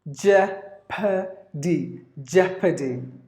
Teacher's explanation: There are 3 syllables in this word, and the first syllable is stressed.